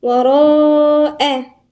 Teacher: وراء، الراء هنا مفخمة وبعدين في مد متصل والهمزة مرققة